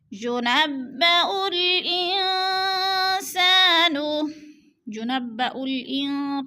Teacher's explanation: ادھر اخفا کریں گے، یعنی ناک میں آواز کو چھپا کر پڑھیں گے۔ اخفا کا معنی ہوتا ہے لفظ کو چھپا کر پڑھنا۔